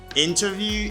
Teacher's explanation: in british english you can say interview you pronounce the t